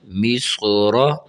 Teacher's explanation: یہاں صاد بھی موٹا ہے اور را کو بھی موٹا کر کے پڑھنا چاہیے، ٹھیک ہے۔ یہ حروف وہ ہیں جنہیں منہ گول کر کے پڑھنا چاہیے، جہاں یہ نشان نظر آ رہے ہیں آپ کو گرین کلر میں۔